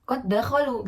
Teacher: pertama berharakat sukun kemudian ada huruf Dal berharakat fathah gitu maka pembacaan dua huruf itu dilebur menjadi satu atau seakan-akan membacanya itu huruf dal bertasydid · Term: idgham